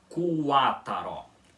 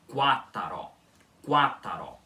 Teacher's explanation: é aqui no elemento quaró da palavra que o u é semivogal, esse aqui que vem depois do q